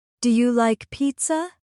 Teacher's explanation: Notice my voice rising at the end.